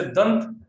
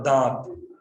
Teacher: अनुस्वार के उच्चारण में वायु केवल नाक से निकलती है, जबकि अनुनासिक के उच्चारण में वायु मुख और नाक दोनों से एक साथ निकलती है।